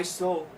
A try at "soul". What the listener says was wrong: Make sure the L on souls doesn't sound like so. Soul. Just go soul. So you don't have to go sola. You can just go soul to an approved. Just phone it into the L.